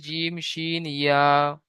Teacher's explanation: জিভের মাঝখান এবং তার বরাবর উপরে তালুর সাথে লাগিয়ে উচ্চারিত হয় জিম শিন ইয়া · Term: 6 নম্বর মাখরাজ